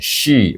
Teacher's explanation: bunyi dengan tafasi anginnya berhembusan